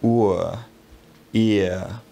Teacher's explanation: But our two diphthongs here are centering diphthongs. The tongue glides away from the periphery of the mouth and into the centre.